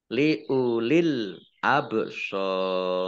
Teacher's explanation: masuk dengan tidak mendengung jadi langsung masuk ke huruf lam ditandai lamnya ada tasdidnya tapi tidak mendengung